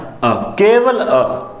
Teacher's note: यानी अ बोलते समय जीभ में कोई हलचल नहीं होती, ऐसा लगता है जीभ के मध्य से इसकी, हालांकि अंदर से आती है, लेकिन ऐसा लगता है कि जीभ का मध्य भाग सक्रिय रहता है। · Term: उदासीन स्वर